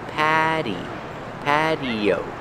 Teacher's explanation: The T is pronounced with a fast D.